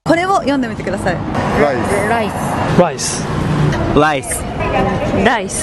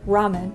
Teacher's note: it's not actually an R it's like halfway between an r and an l and kind of like a D in there a little bit sometimes too